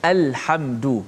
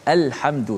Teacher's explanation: lam qamariyah dibaca dengan izhar, maksudnya dijelaskan lam tu mati. Al, macam kita baca alhamdu dalam surah al-Fatihah, alhamdu, lam tu dijelaskan mati.